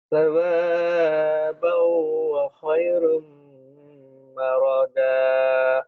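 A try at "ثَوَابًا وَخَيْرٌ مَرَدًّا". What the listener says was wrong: Salah, salah. Maradda, kita nyamber. Bukan maroda ya, maradda, samber.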